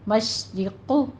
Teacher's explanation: یہاں پہ شین پہ تفشی کی آواز لے کر آنی ہے، حمز بھی ہوگا اس میں. را مرقق ہے، را باریک پڑھی جائے گی. قوف کو آپ نے پر پڑھنا ہے اور دونوں ہونٹوں کو گول کر کے پڑھنا ہے.